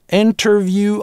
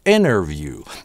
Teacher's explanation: An interview, можно это слово произнести через [t] – interview, а можно подсократить inner-view. Большинство американцев реализуют его так, без [t] - inner-view.